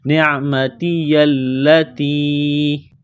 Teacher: لام کے اوپر تشدید ہے تو لام کو دبانا ہے، سختی کرنی ہے ، نعمتی التی، یہ چھوٹی مد ہے، تھوڑا سا کھینچنا ہے،